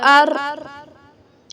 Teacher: حمزہ را زبر ار، اس میں تکرار سی آتی ہے، ایک کپ کپی آتی ہے را میں